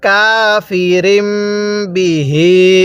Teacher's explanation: মিম সাকিনের পরে বা থাকলে ওই মিমটা গুন্নাহ করে পড়তে হয়।